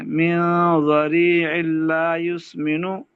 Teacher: تنوین ہے اس کے بعد لام مشدد ہے، لام آ گیا تو یہاں پر ادغام ہوگا بلا غنہ کے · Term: ادغام بلا غنہ